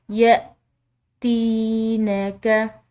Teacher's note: ता के बाद या साकिन है तो एक अलिफ के बराबर इसको खिंचाव देंगे।